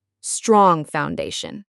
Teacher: The ing sound at the end of strong is nasal. It goes through your nose. Try to let it ring a bit before you start the F in foundation.